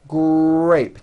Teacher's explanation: in the word grape, the R sound is stronger and you even hear it more than the G sound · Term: R blends